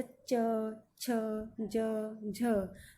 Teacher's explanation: इनमें हल्का सा स्पर्श हम आगे करते हैं तालु को। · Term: स्पर्श संघर्षी